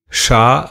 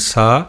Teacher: Shakara's position is Murdha or upper head. Sakara's position is teeth.